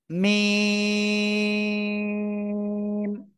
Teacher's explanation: দুই ঠোঁট থেকে আরো অক্ষর উচ্চারিত হয় এখন আমরা সেটা দেখব এই দুই ঠোঁটের শুকনো জায়গা থেকে যে অক্ষরটা উচ্চারিত হয়